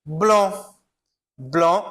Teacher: Blanc, eu também não vou pronunciar o C, certo? Principalmente quando ele está ligado aqui a uma nasal, né?